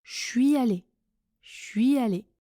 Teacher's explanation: Oui, attention, le son change complètement. Je suis allé avec le son ch de chocolat.